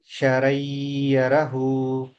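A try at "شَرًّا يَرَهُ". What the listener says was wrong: ఒకటి మిస్ అయ్యారు మీరు. ఏం మిస్ అయ్యారు? శ్రద్ధ. రా మీద శ్రద్ధ మిస్ అయ్యారు.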